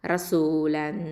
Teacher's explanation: எஹ்ஃபா பண்ணணும், மறைச்சு குன்னா செஞ்சு ஓதணும்.